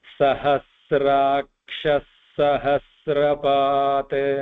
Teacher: I will combine those 2 words there, Sahasrakshah and Sahasrapat. So the Visarga combining followed by the letter Sa. So it will become a double Sa there.